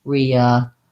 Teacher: So my length and my syllable stress is on the third syllable